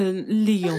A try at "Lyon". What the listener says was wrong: Tu n'as pas besoin de faire comme moi avec les lèvres. Juste prononce Lyon.